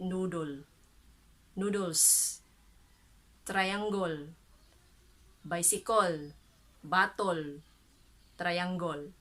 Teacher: But we the Bisayans, we are more of an o sound, o sound, because ours is a bit aggressive in sound, intense, heavy.